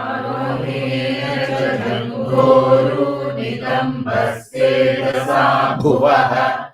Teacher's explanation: So Nitamba, soft ba. And then Bhuvaha is the Mahaprana. No. Nitamba is no Bha.